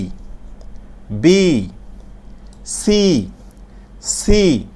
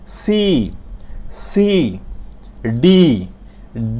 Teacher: আমরা যখন সি বলব একটু মুখ দিয়ে শীষ বের হয়ে যাবে